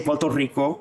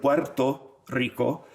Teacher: So R's turn into L's at the end of a syllable.